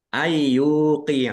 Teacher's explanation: nun sukun bertemu dengan huruf ya bacaan idgham bighunah idgham masuk bi dengan ghunah mendengung ya masuk dengan mendengung langsung Langsung masuk ke huruf ya. · Ya, masuk dengan mendengung. Langsung masuk ke huruf ya nun sukunnya tidak dibaca. Mendengung ditahan biar tampak mendengungnya. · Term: idgham bi gunnah